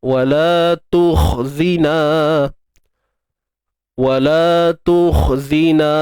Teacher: Isti'la sifat isti'la, angkat pangkal lidah ke langit lembut tu untuk tebalkan kha